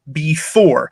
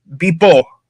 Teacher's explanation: Instead of English settlers misunderstanding Powhatan, we have indigenous Papuans mishearing the f as a p.